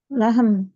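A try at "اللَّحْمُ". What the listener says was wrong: Al-lahmu. Bukan lahmun tapi al-lahmu. Al-lahmu.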